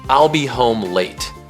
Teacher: Falling intonation. The pitch drops at the end of the sentence. This signals completion and certainty.